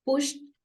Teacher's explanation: when she said pushed, The sound that came at the end, last में जो sound आया वो ट था, ड नहीं था.